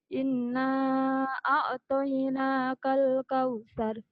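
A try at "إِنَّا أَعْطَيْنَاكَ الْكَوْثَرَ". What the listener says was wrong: Kale, jangan ada e-nya ya. Inna a'toinakal kautsar. Kautsar.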